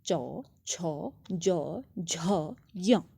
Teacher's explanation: इन वर्णों का उच्चारण स्थान क्या है, हमारा तालु है अर्थात तालव्य।